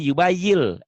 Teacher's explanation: Karena dia di hadapannya bunyi L, jadi yubayil, N-nya hilang. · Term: idgham